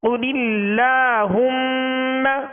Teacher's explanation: یہ لام بھی اس میں جلالت اللہ عز و جل کا لام ہے، اس سے پہلے زیر ہے، تو اس لام کو کیا کریں گے؟ باریک پڑھیں گے. قل اللہم، قاف کو پر پڑھیں گے.